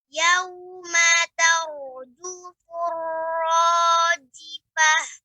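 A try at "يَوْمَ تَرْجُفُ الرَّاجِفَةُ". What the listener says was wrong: Rajifah. Fa. Fa-nya lebih ditampak lagi. Rajifah. Fa.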